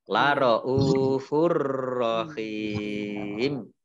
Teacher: Ini adalah bacaan idgham bila gunnah. Masuk dengan tidak mendengung. Jadi langsung masuk ke huruf ro tapi tidak mendengung. Ditandai roknya ada tasdidnya, roknya dibaca double. · Hak kasroh ya sukun matobi'i, tetapi karena bertemu dengan huruf terakhir yang dibaca sukun karena waqaf, maka menjadi mat arid lis sukun. Dibaca panjang 2 harokat, 3 atau 4 harokat.